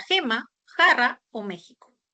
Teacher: la letra G, J que pueden representar a la fricativa velar